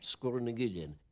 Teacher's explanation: Sgùrr has a long U normally, but when you put in the glide vowel between the two consonants after it, it becomes short